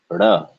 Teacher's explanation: It starts up towards the retroflex position, but not quite touching the top of the mouth, and then it flaps forward. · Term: flapping motion